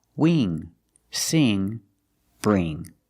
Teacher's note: that's a long e not a short I